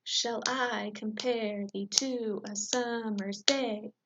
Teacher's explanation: there's first a short unstressed syllable followed by a long stressed syllable for 10 total syllables per line